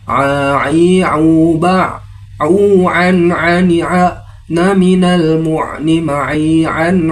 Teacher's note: Huruf ain seperti gambaran sayap kupu-kupu. Adapun makharijul huruf ain berada pada bagian tengah tenggorokan, katup pangkal tenggorokan, seperti mengucapkan huruf a yang disertai tekanan